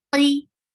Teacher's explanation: with kasra, the heaviness of qaf is lower.